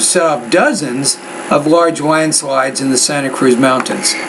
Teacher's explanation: I would put more stress and raise the tone in the word dozens because that's a number and it's important to set off dozens of large landslides in the Santa Cruz Mountains.